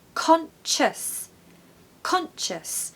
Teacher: So again, we need a really strong con in the first syllable.